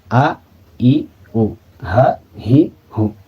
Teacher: Kemudian nah ini jadi hamzah dan ha itu kedua huruf tersebut itu berasal di aqsal halqi atau di pangkal tenggorokan